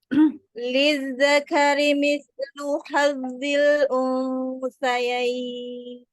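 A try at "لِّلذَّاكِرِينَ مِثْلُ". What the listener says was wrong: Zalnya lebih rokhwah. Lizzakari sa-nya juga lebih rokhwah. Jadi jangan berhenti-berhenti suaranya.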